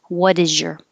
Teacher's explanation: So the T changes to a D, and the S, what is your, is really a Z, is. So the Z and the Y next to each other changes to a J.